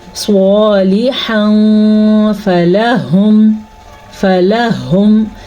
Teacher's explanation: نون تنوین ہوگا، اس کو ہم چھپا کے غنّے کے ساتھ پڑھیں گے